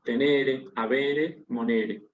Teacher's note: lo importante es que esa E es larga y es acentuada